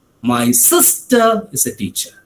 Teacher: in the second example or the second occasion my emphasis was on the second word sister